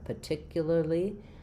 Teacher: So that'll sound incorrect if you don't have that syllable. So in particularly, the LAR can sound just like a lur